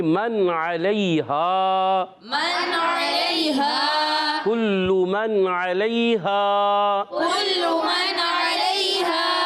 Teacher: علی مدہ ایک الف کھینچنا ہے. آواز آئے گی من علیہا.